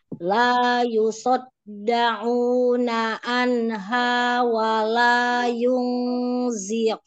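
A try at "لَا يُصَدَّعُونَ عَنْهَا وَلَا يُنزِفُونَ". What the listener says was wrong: Ya, jangan ada jeda. Yung zifun. Hah, jangan berhenti.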